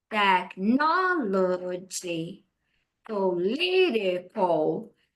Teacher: a tônica tá na segunda sílaba